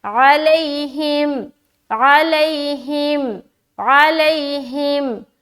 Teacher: یا ساکین اس سے پہلے زبر، یائلین نرمی کے ساتھ جلد ادا کریں گے